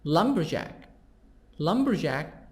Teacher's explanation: stress is the beginning of the word